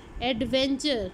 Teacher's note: अब लेबियोडेंटल में क्या होगा, the upper teeth एंड the lower lip are used. Lower lip move करेगा अपर टीथ की तरफ, और अपर टीथ आपके इसमें पैसिव आर्टिकुलेटर है और लोअर लिप आपका एक्टिव आर्टिकुलेटर है। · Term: लेबियोडेंटल्स